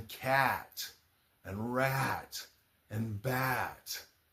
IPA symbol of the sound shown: æ